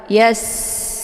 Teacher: Kemudian yas, ini sinnya dibunyikan secara tipis ya, dan dia sifatnya shafir, maka anginnya itu lebih jelas ya